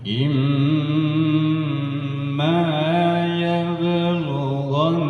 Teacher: Panjang lagi sedikit ya. Lamakan lagi ya di mim tasydid. 3 harakat.